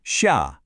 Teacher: We have a sharp falling fourth tone first, sha, and that's followed by a rising third tone.